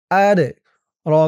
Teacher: زبر ما তিন আলিফটার মধ্যে মুনফাসিল ওয়ামা হামজা দাল জবর আদ দালটা কলকলার হরফ ধাক্কা দিয়ে পড়তে হবে